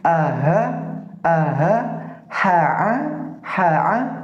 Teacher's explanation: Ketika itu dibaca berdekatan, akan terasa perpindahan makhrajul huruf dari bawah naik ke tengah, kemudian naik ke bagian atas